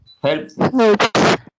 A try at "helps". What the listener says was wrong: Suene la S, porque si no suena la S, suena como infierno. Hell. Helps.